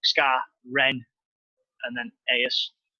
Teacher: the emphasis on the pronunciation of Skarloey and Rheneas is a short, sharp first syllable. So like Scar, Ren, and then Aeus.